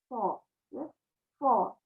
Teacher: Sifat yang ketiga, kalau sod harus terangkat pangkal lidah. Kalau sin enggak.